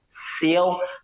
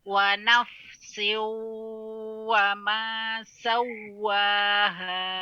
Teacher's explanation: Mohon izin bisa diulangi wa nafsiu wa ma itu ayunkan siu itu mengayunkan namanya siu seolah sinya jadi panjang siu padahal di sini idgham apa artinya idgham yaitu memasukkan kepada setelahnya siu jadi setelah si kasrah langsung bibir dimonyongkan tanpa diayunkan